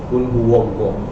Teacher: Dia baca dengan tebal pada huruf waw.